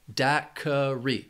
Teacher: Daiquiri has 3 syllables, and the stress is on that first syllable. Daiquiri. This word can be confusing because that Q-U-I can throw people off.